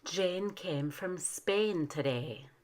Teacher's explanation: In Spanish, the long A tongue seems to be spread out more forward toward the teeth.